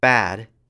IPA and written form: bæːd (bad)